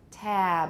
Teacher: gets lengthened so that was new for them but in addition you still need a bit of voicing at the end usually it stops about halfway through but we still need that voicing at least if we're pronouncing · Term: final voicing